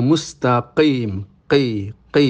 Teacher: makhrajnya di Pangkal lidah dengan langit-langit atasnya atau dengan anak lidah tapi praktiknya bukan e cukup Q jadi diucapkan Q itu sudah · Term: qf